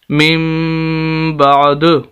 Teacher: یہ دال جب ہم پڑھ رہے ہیں وقف کی حالت میں میم بعد، یہ اس کے اوپر کلکلہ کر رہے ہیں